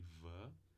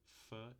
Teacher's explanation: V é o par vozeado de f